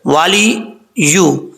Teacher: اب یہاں پر واؤ کو پڑھتے وقت ہونٹ گول کریں گے، لام کے نیچے زیر ہے والی، اس کو والے نہیں پڑھنا، والی یا کے اوپر پیش ہے. یا کا مخرج جو ہے زبان کا درمیان اوپر والے تالو سے لگے تو یا کا جو ہے وہ مخرج ادا ہوتا ہے، اور اس کو زیادہ سختی سے نہیں پڑھنا، نارمل طریقے سے پڑھا جائے گا.